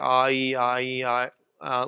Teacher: you can feel how your tongue's moving around, going from low to high when you do it